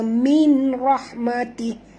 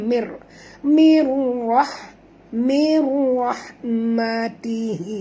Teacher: Nun mati bertemu ra, masuk tanpa dengung, idgham bila guna. Jangan baca min rahmatih, tak betul.